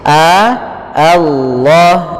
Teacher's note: lamnya lam tafkhim, lam yang kita baca dengan bacaan tebal